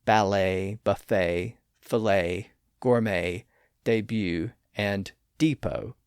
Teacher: Of course, there are a few French loan words where the T is silent at the end, like ballet, buffet, filet, gourmet, debut, and depot. Those T's are silent, at least in American English, because they were silent in French.